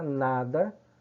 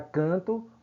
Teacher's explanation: a palavra nada, o N aí é um fonema. Na palavra canto, o N está sem fonema, afônico